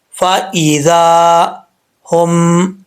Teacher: ذال کا مخرج کیا ہے؟ زبان کی نوک اوپر والے دانتوں کا نچلا جو حصہ ہے نا اس سے لگے گی تو یہ ذال پڑھا جائے گا بغیر سیٹی کے